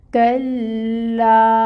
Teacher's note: الف مد کو 2 حرکت کے برابر لمبا کھینچا جاتا ہے۔ کاف کو لام سے ملائیں گے اور پھر لا کو 2 حرکت لمبا پڑھیں گے۔